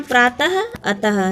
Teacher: यह विसर्ग होता है। इसकी ध्वनि ह की तरह होती है।